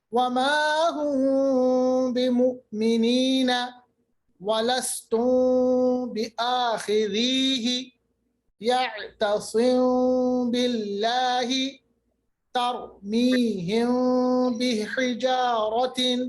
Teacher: آواز کو ہم منہ میں رکھ رہے ہیں, ناک میں جا رہی ہے آواز, مگر کافی حد تک اس کو ہم چھپا رہے ہیں. منہ میں آواز کو چھپانا, اس کو ہم کہتے ہیں صفت اخفا. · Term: اخفائی شفوی